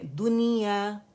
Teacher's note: نون کو ظاہر کر کے پڑھا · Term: اظہار مطلق